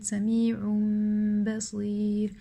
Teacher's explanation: the noon sakina changes into a meme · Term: iqlab